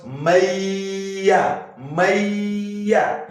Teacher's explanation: You assimilate this nunun sukun into what? The ya'un. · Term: Idghām